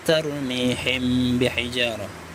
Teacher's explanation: Karena mim mati bertemu ba, bacaannya samar, ikhfa samar. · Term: ikhfa syafawi